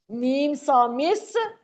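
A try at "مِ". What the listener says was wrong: मीम सा मिस नहीं होता, मीम सा जेर मिस। याद रखना, मिस।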